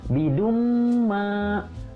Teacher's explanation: Di situ ada dumma tanwin bertemu dengan huruf mim. Jadi dibacanya idgham biguna, ya, jadi ditahan dulu 2 harokat dengan guna. Bidumma itu juga panjangnya 2 harokat.